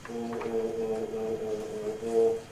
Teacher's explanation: Or. In fact, of all the English vowels, it's the one that is most reliably rounded.